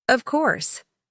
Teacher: of course, with falling intonation of confidence